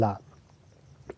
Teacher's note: इस ला को पार्श्विक कहते हैं क्योंकि जब हम ला का उच्चारण करेंगे तो इस किनारे और इस किनारे दोनों किनारों से, यानी कि जिह्वा के पार्श्व बगल से जो है हवा निकलती है